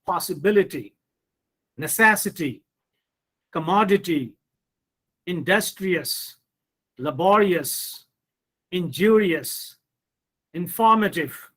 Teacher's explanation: put stress on the third syllable from the end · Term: word stress